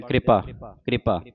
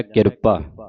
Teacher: ਬਣ ਜਾਂਦਾ ਕਿਰਪਾ ਇਸ ਕਰਕੇ ਇਸ ਨੂੰ ਜਲਦੀ ਦੇ ਨਾਲ ਪੜ੍ਹਨਾ ਜਿਹੜਾ ਪੈਰ ਵਿੱਚ ਰਾਰਾ ਹੈ ਉਹਨੂੰ ਜਲਦੀ ਦੇ ਨਾਲ ਉਚਾਰਨ ਕਰਨਾ